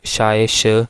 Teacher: only sh is the palato-alveolar consonant